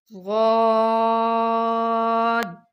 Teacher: اس کا مخرج ہے کہ زبان کی کروٹ، یعنی جو زبان کا دایاں بایاں حصہ ہوتا ہے، طرف ہو یا بائیں طرف ہو، جب وہ اوپر کی 5 داڑوں سے لگے گا۔ غاد یعنی زبان کی کروٹ دائیں یا بائیں والی سائڈ سے جب اوپر کی 5 داڑوں سے لگے گا، خوب موٹا کر کے ادا ہوگا۔